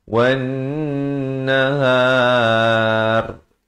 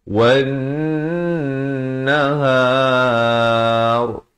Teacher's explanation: Di situ dua harakat dan kemudian har itu, wan nahar itu ra-nya jadi tebal. Dan jangan baca nipis.